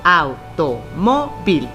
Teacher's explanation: nos damos cuenta que la sílaba tónica está en mo y si contamos las sílabas es la penúltima, por lo tanto es grave.